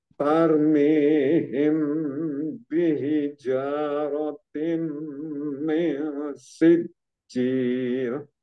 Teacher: أرميهم Oh sebentar بهجارتين sebentar, ini تَرْمِيهِمْ himnya itu mim sukun ketemu dengan ba disebut ikhfa safawi, mim sukun bertemu dengan huruf ba. Him him bihi bihija itu disebut ikhfa safawi, bacanya itu samar ya, bacanya samar.